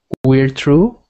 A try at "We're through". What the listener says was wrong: Not true. Not true. Right now, you sound like you're saying this. It sounds like you're saying true. You want it to sound like the same word, but change the T to a TH, like this. Through. Through.